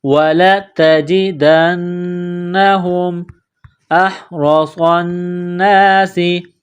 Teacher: باریک کرنا ہے، وَلَتَجِدَنَّهُمْ، دال کو نون کے ساتھ ملانا ہے، نون مشدد ہے، غنہ کریں گے، آواز ناک میں چھپائیں گے ، ہا کو میم کے ساتھ ملانا ہے، وَلَتَجِدَنَّهُمْ أَحْرَصَ النَّاسِ، · ہے، وَلَتَجِدَنَّهُمْ أَحْرَصَ النَّاسِ، حمزہ کو ہا کے ساتھ ملانا ہے، گلے کے درمیان سے زور لگا کر ہا کو نکالیں گے